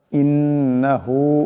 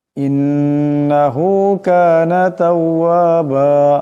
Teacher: ইন্নাহু এখানে নুন মুশাদ্দাদ আছে, এক আলিফ পরিমাণ গুন্না হবে। হু এক আলিফ পরিমাণ লম্বা হবে।